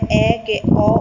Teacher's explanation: એ સ્વરો છે કે જેના ઉચ્ચારણ વખતે આપણું જે મુખ છે એ સૌથી વધારે ઉઘડે છે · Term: વિવૃત્ત સ્વરો